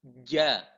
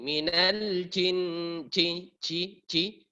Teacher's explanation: Pertengahan lidah menyentuh langit-langit atas, ja. Dia harus menempel keras. Karena kapan tidak menempel keras, dia akan menyemburkan udara. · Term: jim